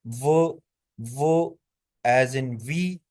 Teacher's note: Mouth के हिस्से जो हैं क्लोज होते हैं। But air flows smoothly without friction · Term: एप्रोक्समेट